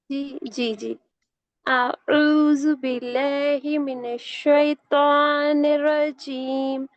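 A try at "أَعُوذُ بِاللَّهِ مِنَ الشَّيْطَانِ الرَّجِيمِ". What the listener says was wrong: आपने आउज़ु में जाल की अदायगी सही नहीं करी, आइन तो फिर भी ठीक निकला आपका, है ना।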